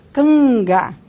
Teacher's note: Então, ó, campo, aqui nós temos então uma bilabial, em canta uma dental e canga nós temos uma palatal, né? Então a consoante nasal da coda silábica, ela adquire o ponto da consoante seguinte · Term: assimilação do ponto